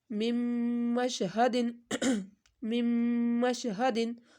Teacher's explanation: نون ساکن کے بعد میم آ گیا تو ہم نے غنہ کیا